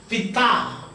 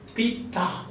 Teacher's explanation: So the stress is on the second syllable, pita, there are two syllables.